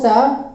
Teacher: वो स दंत मूल के सहारे से बोला जाता है।